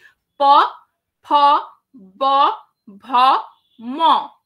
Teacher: সেটা হচ্ছে যে এই দুটো ঠোঁটের মধ্যে বাধা প্রাপ্ত হচ্ছে অর্থাৎ মেইনলি দুটো ঠোঁট দিয়ে দুটো এই ব্যঞ্জনগুলো উচ্চারিত হচ্ছে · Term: অষ্ঠ ব্যঞ্জন ধ্বনি